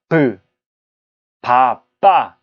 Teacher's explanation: 입술을 딱 막아버립니다. 입술을 막아버리다가 빵 터트리면서 발음이 돼요. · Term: 입술 소리